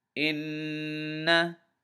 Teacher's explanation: We're going to hold the noon in our nose a little bit.